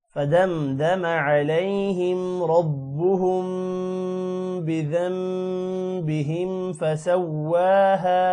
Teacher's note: را موٹا ہوگا با کے ساتھ ملے گا شد کی وجہ سے